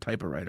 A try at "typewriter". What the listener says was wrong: saying it like you're saying it like it's two things. Typewriter.